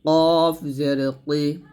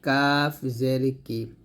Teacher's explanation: কফটা মোটা করে বলতে হবে কাফটা পাতলা করে বলতে হবে